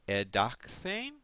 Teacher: the hard consonant becomes influenced by the theta and becomes its aspirated partner. So dedasco becomes edane.